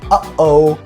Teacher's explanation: glottal sounds, which literally involve stopping the glottis like the pause you hear in uh-oh, kind of cutting yourself short there.